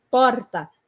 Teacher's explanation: Eu uso bastante a minha língua que vai vibrar no céu da boca.